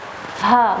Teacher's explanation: Ha besar keluarnya dari aqsal halq. Jadi aqsa itu di bagian sini ya. · Huruf Ha besar keluar dari aqsal halq (bagian terdalam tenggorokan).